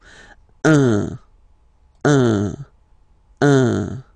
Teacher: So it's what we call the nasal, so it goes in your nose, okay, un. So if you listen to me, you don't hear any N, okay